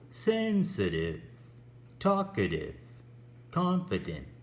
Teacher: we stress the very first syllable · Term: word stress